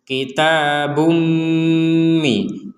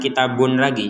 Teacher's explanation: Di sini ada tanwin, ya, dhammatain bertemu dengan mim, maka kita memasukkan dhammatain ini kepada mim sehingga bacanya kita bumi.